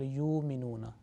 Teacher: waw sakin is a letter of prolongation, and it prolongs the previous letter